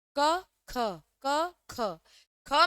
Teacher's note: ख में यहां हवा ज्यादा लग रही है। क में यहां कम लग रही है। इसका मतलब यही है कि क अल्पप्राण है। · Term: महाप्राण